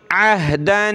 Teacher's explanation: इंदल्लाहि, इंदल्लाहि अहदन, ये कलरफुल है, तनवीन, नाक में आवाज़ पैदा करेंगे, इसको तनवीन का इख्फ़ा कहते हैं